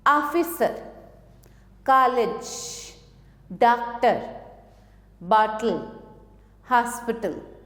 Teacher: यह आ और ओ के मध्य की ध्वनि है